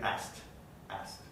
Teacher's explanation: the k it's deleted